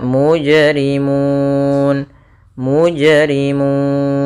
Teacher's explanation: Maka mu itu asalnya kan dua harakat karena dia di akhir bacaan ya maka dia langsung sehingga di sini mun boleh kita panjangkan dua harakat boleh empat harakat dan boleh pula enam harakat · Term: mad arid lukun